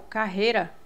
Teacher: porque porque eu só posso ter uma vogal por sílaba então o som emitido pela letra i é menos forte do que o é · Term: semivogal